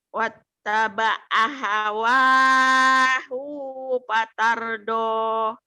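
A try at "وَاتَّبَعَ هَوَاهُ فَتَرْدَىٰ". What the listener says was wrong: Patardo, patarda, hunya pendek. Patarda bukan patardo.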